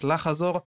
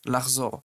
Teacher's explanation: this verb can be pronounced as lachazor, but 99% of Israelis pronounce it as lachzor